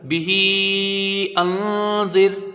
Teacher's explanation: ٹھیک ہے، زال جو ہے حروف اخفا میں سے ایک الف کی مقدار یہاں غنہ ہوگا. زال کو را سے ملا کے جلدی پڑھا جائے گا، اور را یہاں پر باریک ہوگی کیونکہ را ساکن سے پہلے زیر ہے